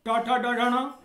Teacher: इसी प्रकार से ण टा वर्ग का अक्षर है, टा ठा डा ढा णा, अतः टा वर्ग के वर्ण होने के कारण ण का जो उच्चारण स्थान है वह मूर्धा और नासिका है।